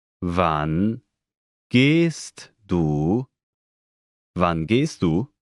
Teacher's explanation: Note the rising intonation